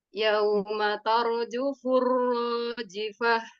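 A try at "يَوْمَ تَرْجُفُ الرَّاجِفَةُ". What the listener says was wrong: Tanya masih terlalu kuat. Coba yaumatar. kalau dia menebalkan ro, tanya jadi ikut tebal jadinya. Tanya tetap tipis. Yaumatar. Tanya tipis, ro-nya saja yang tebal. Tar.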